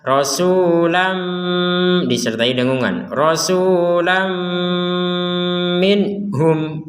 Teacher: Kalau tanwin bertemu dengan mim sebagaimana yang sebelumnya ya. Nah ini tanwin fathatain bertemu dengan mim, maka kita memasukkan disertai dengungan yang asalnya rasulan min.